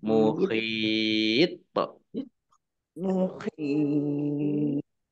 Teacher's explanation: ya sukun mat tobi'i, tetapi karena bertemu dengan huruf terakhir yang dibaca sukun karena wakof, maka menjadi mat arid lis sukun. Dibaca panjang boleh 6, boleh 4, dan boleh 2 harokat.